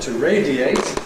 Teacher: [eɪ] is a strong vowel, so you can’t compress to [ˈreɪdjeɪt]. It has to remain three syllables. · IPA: [ˈreɪdieɪt]